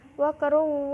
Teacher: roknya itu rok tafim dibaca tebal